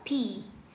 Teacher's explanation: Cái này thì chúng ta có bật hơi, thì chúng ta đọc là P. Bật hơi thấy đó, như vậy đó, nhưng mà có nhiều người đó, họ thấy khó, không có khó, mà bậm sâu vô.